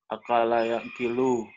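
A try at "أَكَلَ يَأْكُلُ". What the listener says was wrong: Akala yakulu. Yakulu, bukan yakilu ya. Akala yakulu.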